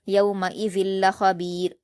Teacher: لام پر جب لام سے ملائیں گے تو یہاں پر غنہ نہیں کیا جائے گا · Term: ادغام یرملون